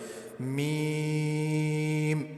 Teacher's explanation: یہ ان حروف میں سے جن کو ہونٹوں سے ادا کرتے ہیں، یعنی ہونٹ آپس میں ملتے ہیں تو اس سے میم ادا ہوتا ہے، اور اس کو کھینچ کے پڑھا جائے گا کیونکہ اس کے اوپر بھی مد ہے۔